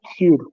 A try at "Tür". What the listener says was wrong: Okay, umlaut. Not Tür, Tür.